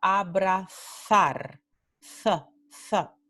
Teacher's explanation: En el norte y el centro de España, esta palabra se pronuncia abrazar, th. Este sonido se hace con la punta de la lengua entre los dientes. So the tip of your tongue between the teeth, like when you are pronouncing the TH sound of the word through, like John threw the ball.